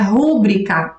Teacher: A maioria das pessoas pronuncia rúbrica e até escreve rúbrica com acento, como se fosse uma palavra proparoxítona.